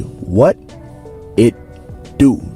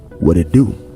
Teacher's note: sometimes in the American accent the T itself is flapped around into a d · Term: flap T sound